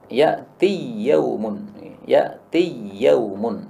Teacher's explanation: Idgham karena ya ketemu dengan ya